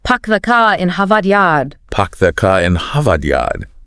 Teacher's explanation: they both drop those R sounds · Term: Boston accent